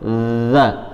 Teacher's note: Zal itu ujung lidah di antara gigi seri atas bawah, za. Kemudian dia sifatnya juga mengalir, jadi za, bukan hentakan. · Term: huruf zal